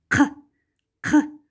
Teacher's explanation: При произнесении данного звука задняя часть языка смыкается с задней частью неба, после чего воздух мгновенно вырывается. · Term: глухой заднеязычный